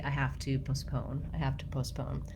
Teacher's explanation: you can hear how quick that first syllable is, and then I draw out the second syllable. Then when it comes to the British English, they have also second syllable stress, but in British English, we have schwa in the first syllable, and then my second syllable stress.